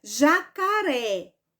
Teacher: sorte for é justamente Então esta palavra ela é oxítona porque oxítona porque a sílaba mais forte é a última sílaba